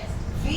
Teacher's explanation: वी आपका voiced है, वी आपका लैबियोडेंटल है और वी आपका फ्रिकेटिव है